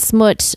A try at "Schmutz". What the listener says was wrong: Schmutz. You said smuts. No, you gotta get the schmutz. Schmutz. Schmutz. It's like say shush. Schmutz.